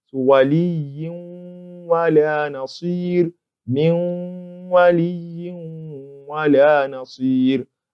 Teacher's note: When we look at this second example, it's a tanween, and as we've always said, in every tanween there is a Nuun Sakinah. So the Nuun Sakinah there is entered into this waw in such a way that the ghunnah remains.